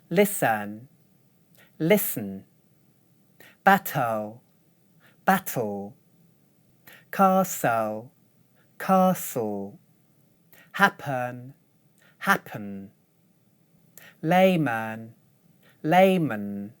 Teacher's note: The voice from these consonants acts as the vowel in these syllables.